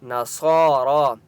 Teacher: صاد کو اور را کو اوپر کھڑا زبر ہے اس لیے ایک ایک الف کی مقدار کھینچ کر پڑھیں گے۔